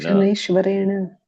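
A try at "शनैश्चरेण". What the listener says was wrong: Shanishcharena. It is Shanishchara, not like Ishvara.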